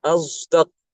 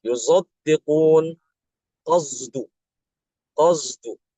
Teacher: Jadi huruf sodnya itu tidak dibaca murni sod, tapi ada dicampur dengan huruf zai. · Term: ismam huruf